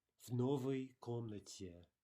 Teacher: we're pronouncing the v and the word directly after it as though they were a single word